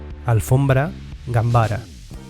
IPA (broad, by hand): am